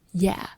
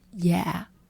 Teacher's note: it's pronounced like Yeah with a very soft downward tone